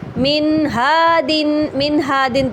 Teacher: نون ساکن کو اچھی طریقے سے اظہار کے ساتھ، یعنی نون ساکن کو ظاہر کر کے پڑھا